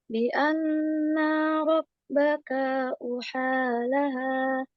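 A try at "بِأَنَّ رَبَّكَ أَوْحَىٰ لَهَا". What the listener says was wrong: Nanya tidak panjang.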